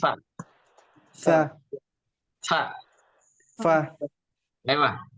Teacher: Gigi atas ke bibir bawah betul